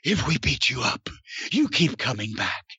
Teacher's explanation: he was breathy in this one because he was really excited